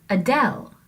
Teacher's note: we have an unstressed syllable first uh and then del is the stressed syllable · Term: iamb